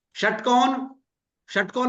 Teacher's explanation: जब षटकोण में शय को बोलते हैं तो जीभ मूर्धा पे टच हो रही है